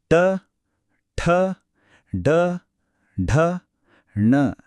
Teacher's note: ನಮ್ಮ ಮೂರನೇ ಸ್ಟಾಪ್ ಸ್ವಲ್ಪ ವಿಭಿನ್ನವಾಗಿದೆ ಇದರ ಹೆಸರು ಮೂರ್ಧನ್ಯ ಇಲ್ಲಿ ಶಬ್ದ ಮಾಡಕ್ಕೆ ನಾಲಿಗೆ ತುದಿಯನ್ನ ಹಿಂದಕ್ಕೆ ಮಡಚಿ ಗಟ್ಟಿ ಅಂಗುಳಿನ ಸ್ವಲ್ಪ ಹಿಂದಕ್ಕೆ ತಟ್ಟಬೇಕು